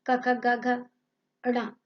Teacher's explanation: स्पर्श में क वर्ग, क ख ग घ ण कंठ से बोले जाते हैं